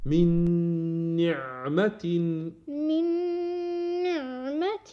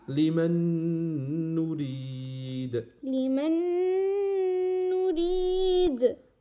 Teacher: إدغم نون ساكن بالنون مع الغنة